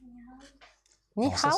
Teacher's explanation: Tu as bien fait le H aspiré.